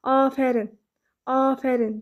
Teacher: Görürsünüz, bir dənə A uzun tələffüz olunur. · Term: uzun tələffüz olunan sait